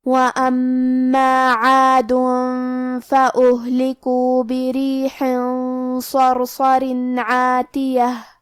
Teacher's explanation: حرف العین کی ادائیگی حلق کے درمیان والی حصے سے ہے · کلمت وَأَمَّا میں میم پہ تشدید ہے، لہذا ہم یہ حرف کو 2 حرف کے برابر پڑھیں گے کیونکہ تشدید کی اصلیت 2 حرف ہے.